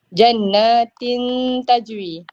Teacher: Dia bukan nak cakap exactly dengung. Dia in between, dengung dan jelas. So bunyi dia in between lah. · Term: ifak hakiki